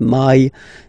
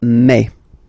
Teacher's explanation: In French, remember when you combine this a and then e vowels, you get the sound e. So really open e, okay, and then you pronounce it me.